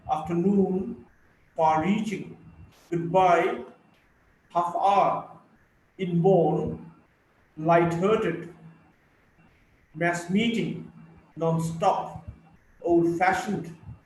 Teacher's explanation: In some compound words, both elements are stressed. · The tonic stress being on the second syllable